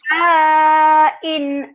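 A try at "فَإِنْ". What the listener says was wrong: Wes, kenapa panjang-panjang? Fa'in karena berarti barisnya.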